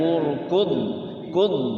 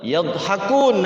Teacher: Dha sukun tuh jangan sampai kayak dal dipantulkan.